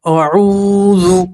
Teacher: واو مدہ کسی کے واو کے اوپر جزم ہو، اس سے پہلے والے حرف کے اوپر پیش ہو تو اسے واو مدہ کہتے ہیں۔ واو مدہ میں ایک الف کے برابر کھینچ کر پڑھتے ہیں